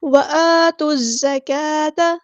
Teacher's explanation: لام یہاں پر لام شمسیہ ہے اس کو ظاہر نہیں کریں گے ، زا کو سختی سے ادا کریں گے، سٹی بھی آئے